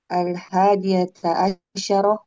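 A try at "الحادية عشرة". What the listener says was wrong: Nah, shinnya mati. Al-hadiyata asyrata.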